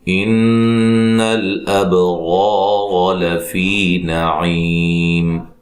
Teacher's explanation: نون مشدد پہ غنہ ضروری ہے اور با پہ قلقلہ کرنا ہے، را کو موٹا ادا کرنا ہے، الف مدہ ہے، اس را کو بھی موٹا ادا کرنا ہے، زبر ہے، ٹھیک ہے، اور اس کے اوپر بھی زبر ہے، دونوں راؤں کو موٹا ادا کرنا ہے۔